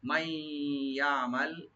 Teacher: নুন সাকিন পরে যেহেতু ইয়ার সেখানে ইদগাম উইথ গুন্না